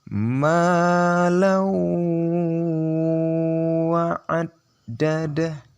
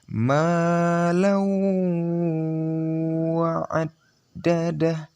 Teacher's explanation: yang kita dengungkan di wawnya bukan di tanwinnya. Tanwinnya hampir tidak terdengar. Sepanjang 2 sampai 3 harokat.